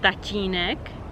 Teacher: Again, this one might be a little bit complicated to pronounce, but it's basically very soft T with Y maybe